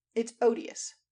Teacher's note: made it short, as in odd.